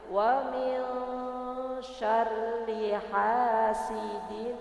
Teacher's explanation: rnya itu tipis tapi kita tidak panjang · karena ro-nya itu berkasrah, jadi makanya dibaca tarkik ya Bu ya. Tapi ro-nya itu tipis, tapi kita tidak panjang ya Bu ya.